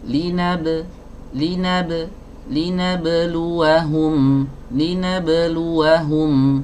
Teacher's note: huruf ba ini adalah huruf tipis, maka qalqalah atau pantulannya tidak boleh dibaca tebal.